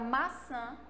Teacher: sai anasalado pelo nariz